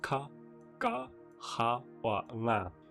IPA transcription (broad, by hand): ka, ga, xa or ŋa